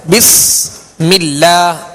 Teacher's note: بسم اللہ، یہاں سین ہے، سین کو سختی کے ساتھ ادا کریں گے. بسم اللہ، اللہ عز و جل کے لام سے پہلے زیر، لہذا باریک پڑھیں گے